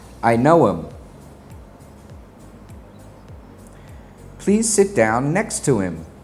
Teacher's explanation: The pronoun him will sound like im.